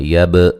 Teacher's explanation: با پہ قلقلہ کریں گے، ہلا کے پڑھیں گے